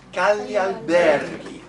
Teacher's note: there's only one word accent, it's on ber